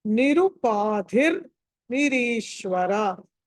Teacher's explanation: ధి అన్నది ధా అన్నది మహాప్రాణం ఒత్తి పలకాలి